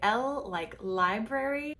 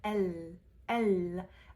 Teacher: in essence the tongue is very forward in your mouth so the French L is actually further back in your mouth than the English l